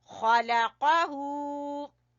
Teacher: खा को छोटा, लाम को छोटा और काफ को भी छोटा पढ़ेंगे और हू को खींचेंगे